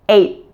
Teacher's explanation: you're actually saying T with your tongue sticking out 8th well the same thing happens with the end sound before · Now remember in the word eighth, how the T at the end of 8 moves forward in your mouth in anticipation for the TH sound? So you're actually saying T with your tongue sticking out.